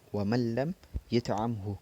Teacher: Nun sukun bertemu lam ini merupakan contoh bacaan idgham bila gunnah karena bertemu dengan huruf lam.